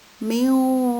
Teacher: dibaca samar-samar, yaitu antara jelas dan dengung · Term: ikhfa